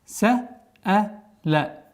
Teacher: Долгота в размере 4 огласовок.